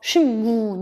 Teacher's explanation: 뒤에 있는 미음 때문에 양순음화돼. 신문, 조음 위치가 변하는 이유는 뭐냐면 발음을 편하게 하려고.